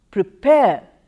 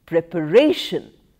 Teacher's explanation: second syllable stress shifts to the third syllable